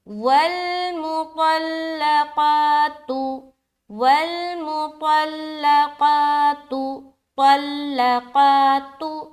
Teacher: طا اور قاف کو موٹا، باقی ہر حرف کو باریک رکھنی ہے